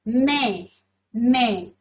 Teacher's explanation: मैं में आपकी नाक और मुख से तो आ रही है वायु बाहर, लेकिन आप इसमें चंद्र बिंदु नहीं रखोगे क्योंकि पहले से ही उसमें आई की मात्रा है।